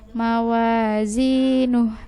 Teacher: Mawa panjang 2 harakat, zi panjang 2 harakat, nuhnya enggak panjang.